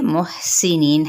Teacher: हा वस्ते हलक से अदा करना है। और हम्स भी हो रहा है यहाँ पे, ये देखिए साकिन है।